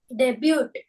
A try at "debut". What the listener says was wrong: T is silent. T का कुछ काम नहीं है, सिर्फ वहां खड़े रहना है. डेब्यू. टी का कुछ काम नहीं है, सिर्फ वहां खड़े रहना है.